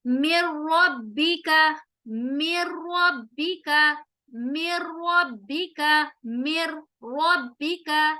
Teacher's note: نون ساکن کے بعد ہم نون ساکن کو را کے اندر مرج کر رہے ہیں اور ہم غنہ نہیں کریں گے را کے پر، ایسے مِن ربک، یہ غلط ہوگا، ہم یہاں پر رورنگ ساؤنڈ نہیں لائیں گے، مر غلط، مِن ربک، مِن ربک، مِن ربک، مِن ربک، ٹھیک ہے؟ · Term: ادغام وداؤٹ غنہ